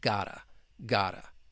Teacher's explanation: even though I spelled it with a t, it is still more of a flap t. You hear that soft d.